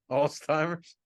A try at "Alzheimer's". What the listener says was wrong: There's no T in Alzheimer's. It's Alzheimer's.